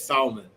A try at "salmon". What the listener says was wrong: salmon is Spanish. Salmon is English. The L is silent.